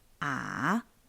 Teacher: First you should make the sound fall down to a lower place and then you rise up. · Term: third tone